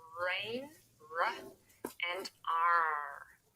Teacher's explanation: the tongue is curved backwards, and I've put a little arrow here to show that the tongue would move backwards. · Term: American R